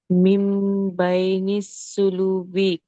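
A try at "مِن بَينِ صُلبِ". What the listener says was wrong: సులు కాదు, సుల్ బి.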